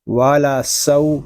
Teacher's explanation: واو زبر وا، لام زبر لا، والا، سین واو زبر سو، والا سو، یہاں واولین ہو رہا ہے اور سین اس حروف صفیریہ میں سے ہے، اس میں سیٹی کی آواز بھی آئے گی۔